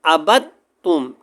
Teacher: جو شد والا لفظ ہے اس کو ہم پڑھیں گے، پیچھے با کے ساتھ ملائیں گے، اور دال کا تا کے اندر بغیر غنہ ادغام ہو جائے گا، مطلب کہ اس کے اندر مدغم ہو جائے گی، اس کی آواز نہیں آئے گی، تا کی آواز آئے گی۔ یا آپ یہ سمجھ لیں کہ اس کا وجود جو ہے وہ ختم ہو جائے گا، تا کا وجود باقی رہے گا۔